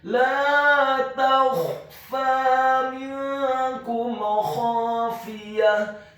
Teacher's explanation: Kata minkum khafiyah, huruf mim-nya dibaca kasrah 1 harokat. Kemudian huruf nun yang sukun bertemu dengan huruf kaf yang dhammah, hukum bacaannya adalah ikhfa, dibaca secara samar-samar